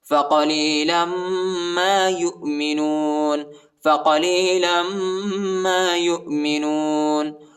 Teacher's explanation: لام کو میم کے ساتھ ملائیں گے اور غنہ بھی کریں گے